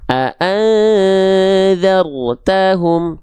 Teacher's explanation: ro sukun di sini kita baca dengan keadaan yang tebal